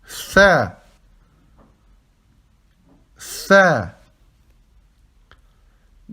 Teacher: Ici, tha, vous mettez la langue entre vos dents.